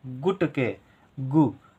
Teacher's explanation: ग के साथ उ का उच्चारण हो रहा है लेकिन कम देर के लिए हो रहा है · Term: छोटे ऊ की मात्रा